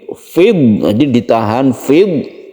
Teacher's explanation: Dot itu disukun tanpa kolkolah, jadi jangan dikolkolahkan yang dot ini.